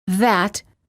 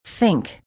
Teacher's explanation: there are two th sounds in english the voiced th as in that and the voiceless th as in think